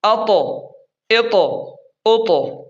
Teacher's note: تو کو موٹا پڑھیں گے اور تھوڑا سا ہلائیں گے، تھوڑا سا ہلائیں گے کیونکہ حروف قلقلہ میں سے ہے۔